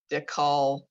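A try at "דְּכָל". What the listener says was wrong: Not ko, not a k. It's guttural. Ch.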